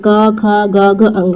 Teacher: क वर्ग की सभी ध्वनियां जो होती है वो कंठ से उच्चारित होती है। ठीक है, इसलिए उन्हें कंटक ध्वनि भी कहा जाता है।